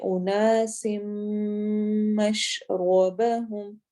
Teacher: تو ہم اس کو پڑھیں گے اناس مشربہم، مشربہم نہیں پڑھنا، مشرب را کو موٹا کر کے پڑھنا ہے